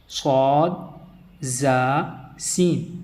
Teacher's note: صاد، زا، سین سیٹی کے ساتھ ادا کریں گے۔ اگر ان میں سیٹی نہیں آئی، نرمی آئی، تو پھر یہ ذال، ثا اور ضا کی طرف لوٹ جائیں گے تو ان کا مخرج جو ہے وہ غلط ہو جائے گا۔